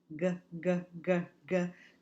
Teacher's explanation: The back of our tongue is moving back. It's going to retract and say g, g, g, g. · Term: scraper sounds